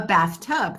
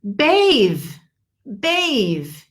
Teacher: the th is not vibrating but to bathe as verb the th is vibrated